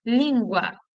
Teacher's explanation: se A é vogal, o U só pode ser semivogal. Se eu tenho semivogal mais vogal na mesma sílaba, eu tenho um ditongo.